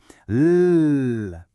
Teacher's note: Feel that little buzz, that vibration. That's a voiced sound.